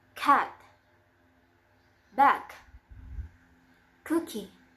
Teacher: And is voiceless. The place of articulation is in velar, and the manner of articulation is plosive.